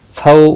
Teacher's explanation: دونوں کو تھوڑا نرمی کے ساتھ آدھے الف کے برابر کھینچ کر پڑھیں گے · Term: واولین